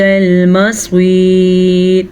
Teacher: ربنا، را کو پر پڑھنا ہے، وَإِلَيْكَ الْمَصِيرُ، مصیر، صاد کو پر پڑھنا ہے اور یا مدہ کو کھینچ کے پڑھنا ہے. را باریک پڑھی جائے گی کیونکہ را وقف کی وجہ سے ساکن ہو جائے گی. ساکن یا سے پیچھے یا ساکن ہے اور یا ساکن سے پیچھے صاد ہے، تو اسی لیے یہ را باریک پڑھی جائے گی.